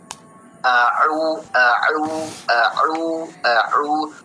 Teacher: Jadi makharijul huruf ain itu bukan berada di hidung tapi berada di tenggorokan ya.